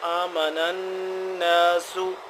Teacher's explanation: وَإِذَا قِيلَ لَهُمْ آمِنُوا، ہلکا سا لمبا ایک الف کے برابر، آمِنُوا كَمَا آمَنَ النَّاسُ، یہ والی مد ہے، اس مد کو 2 سے 3 حرف کے برابر لمبا کرنا ہے، اور ساتھ ہی آمَنَ کھلا زبر ہے، تھوڑا سا اس کو لمبا کریں گے